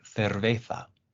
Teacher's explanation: Another one that you might run into, especially in Spain, is that sometimes the C or the Z can sound like a th